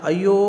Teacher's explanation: ಯ ಜೊತೆಗೆ ಇರತಕ್ಕಂತ ಓ ಸ್ವರ ಇದೆಯಲ್ಲ ಆ ಸ್ವರವನ್ನ ನಾವು ಮೂರು ಮಾತ್ರಾಕಾಲದಲ್ಲಿ ಹೇಳ್ತೀವಿ . ಹೀಗಾಗಿ ಮೂರು ಮಾತ್ರಾಕಾಲದಲ್ಲಿ ಉಚ್ಚಾರಣೆ ಮಾಡಿದ್ರೆ ಅವುಗಳನ್ನ ನಾವು ಪೃತಸ್ವರಗಳು ಅಂತ ಹೇಳಿ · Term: ಪ್ಲುತಸ್ವರ